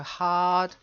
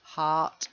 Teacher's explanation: Make sure it's a D. Hard. Otherwise, it might sound like heart.